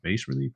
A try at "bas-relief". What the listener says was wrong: think the S is silent. I think it's French.